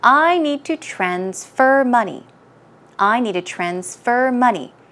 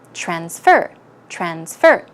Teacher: put the stress on the second syllable when you are using transfer as a verb